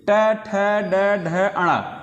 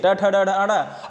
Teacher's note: ट वर्ग कहाँ से बोलते हैं, मूर्धा से। मूर्धा कहने का मतलब है जो बोलने में हमारी जीव मुड़ जाए।